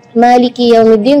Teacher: Itu kadang-kadang ketinggalan karena pengen buru-buru saat membaca Al-Fatihah dalam sholat, jadi Maliki Yaumiddin kedengarannya sukun. Maka ketika kita membaca Maliki, kita perhatikan kaf kasrah di huruf kaf harus kasrah yang sempurna